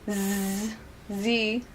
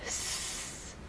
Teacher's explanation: So Z is voiced, you feel it. S, unvoiced, voiceless, you don't feel anything.